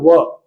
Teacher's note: व का जो उच्चारण करना पड़ेगा होठों को गोल करना पड़ेगा और वायु निकालते हुए बोलना पड़ेगा